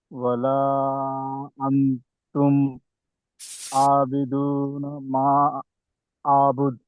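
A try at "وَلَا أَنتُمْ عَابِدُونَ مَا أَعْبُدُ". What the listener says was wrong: ఇఖ్వా చేయలేదు ఇప్పుడు. ఇఖ్వా ఎక్కడ చేయాలి ఒకసారి ఇఖ్వా ఎక్కడ చేయాలి? ఖల్ఖలా అది. ఇఖ్వా ఎక్కడ చేయాలి?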